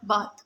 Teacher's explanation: The initial sound of thin and the final sound of bath are both voiceless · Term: voiceless dentals